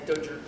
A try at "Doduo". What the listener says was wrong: All right, you didn't finish saying it. You stuttered.